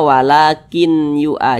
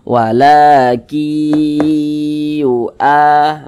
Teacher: Kemudian digunnahkan atau didengungkan. Jadi suaranya itu kita tahan, kita panjangkan sejenak. Nah, panjangnya 2 harokat. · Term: idgham bi gunnah